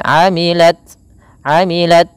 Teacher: ta memiliki sifat hamas ketika ia sukun